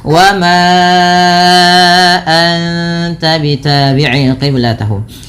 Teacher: Panjangkan suara ma sepanjang 4 atau 5 harakat karena ia termasuk bacaan mad jaiz munfasil, yang dimana kalau mad jaiz munfasil harus dipanjangkan sepanjang 4 harokat atau 5 harokat, tidak boleh 2 kalau dalam jalur imamnya Imam Syatibi.